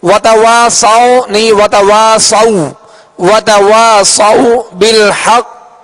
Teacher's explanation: واو ساکن ہے، اس سے پہلے زبر ہے، لہذا واو لین کا قاعدہ ہے اور نرمی کے ساتھ اس کو معروف طریقے سے پڑھیں گے